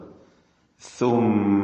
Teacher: നാവിന്റെ അറ്റത്തിന്റെ മുകൾഭാഗവും മേലെ മുൻപല്ലിന്റെ അറ്റവും ഇതാണ് സിന്റെ മസ്റജ്